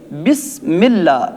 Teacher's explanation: حروف صفیریہ میں اس سین کے اندر سیٹی کی آواز کا آنا ضروری ہے